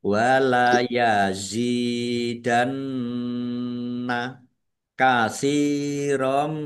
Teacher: Wala yazidanna ya kasrah ya sukun mad thobi'i panjang dua harakat. Nun tasdid bacaan ghunah atau mendengung ya dibaca mendengung dan ditahan biar tampak dengungannya